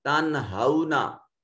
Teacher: نون ساکن کے بعد ہا حرف اظہار ہے، نون کو ظاہر کر کے پڑھیں گے